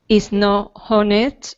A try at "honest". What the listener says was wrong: this word, honest, we actually don't say the H. So we would say is not honest. Honest. So the H is not there.